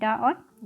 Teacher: उच्छिप्त व्यंजन में डा और ढा ये वर्ड हमारे आते हैं